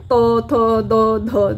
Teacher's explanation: सब का उच्चारण करते समय हमारी जो जीवा है जीवा का नोक का भाग है वो दांतों को स्पर्श कर रहा है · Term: दंत ध्वनियां